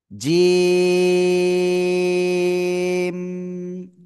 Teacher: জিহ্বার মধ্যখান, তার বরাবর উপরে তালুর সাথে লাগাবো, লাগিয়ে আমরা তিন আলিফ টেনে আমরা উচ্চারণ করব।